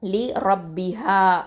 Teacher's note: லி ரப்பிஹா அப்படின்னு 2 அலிஃப் நீட்டி ஓதணும். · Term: மத்து தபி